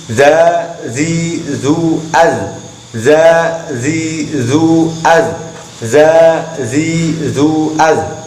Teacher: Yang tepatnya, yang pas dengan aturan makhrajnya adalah ujung lidah terkena gigi depan atas bagian dalam.